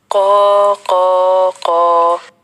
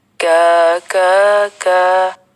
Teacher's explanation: قاف کی آواز موٹی ہوتی ہے، اس کے مقابلے میں کاف کی آواز باریک ہوتی ہے